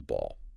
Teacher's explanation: You press your lips together firmly just for a moment and then release a little puff of air. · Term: bilabial stop